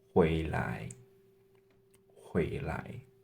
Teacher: second tone 回 and 来 is actually a neutral tone in this word